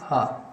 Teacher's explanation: हा आपका कंठ से उच्चारित होता है